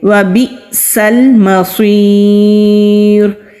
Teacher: سین سیٹی والے حروف میں سے ہے، صاد مستعلیہ حروف میں سے ہے، یا ساکن سے پہلے زیر ہے تو یا مدہ ہے، وقف کی علامت ہے، را پر رکیں گے، ساکن کر کے رکیں گے تو را سے پہلے زیر ہے اس لیے را کو باریک ہی پڑھیں گے